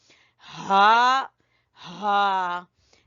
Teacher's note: ये हा है गले के दरमियान से